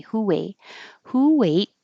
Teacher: Invisible W. Going from rounded lips who to unrounded lips A.